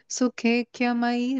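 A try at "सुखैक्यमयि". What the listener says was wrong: Okay, that ye is a dirgha. So let's try it by saying it like a dirgha, no? Then it will come nicely, fit in the beat.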